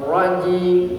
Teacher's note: Semi tertahan ya. Semi tertahan dan semi mengalir. Itu ro bainiyah namanya.